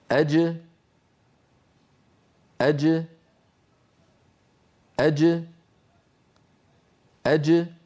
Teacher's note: الصوت ينحبس خلف اللسان ثم ينطلق عندما يبتعد وسط اللسان عن غار الحنك الأعلى، فتخرج الجيم المقلقلة بتباعد طرفي عضو النطق، وهما هنا وسط اللسان مع ما يحاذيه من الحنك الأعلى، ثم يتابع الصوت طريقه إلى الخارج، وتبقى الجيم شديدة مجهورة، أي محبوسة الصوت محبوسة النفس.